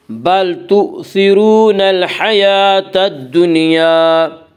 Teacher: ہا یہاں حروف قمری میں سے ہے اور ہا سے پہلے الف اور لام ہیں، اس لیے صرف لام کو پڑھا جائے گا، الف کو نہ پڑھیں گے۔ یا کے اوپر کھڑا زبر ہے، کھڑا زبر کو ایک الف کے برابر کھینچ کر پڑھیں گے۔